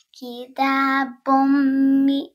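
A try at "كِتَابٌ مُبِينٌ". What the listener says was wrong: No, but meme has a dhamma on it. Mu. Kitabum mubinun. Kitabum.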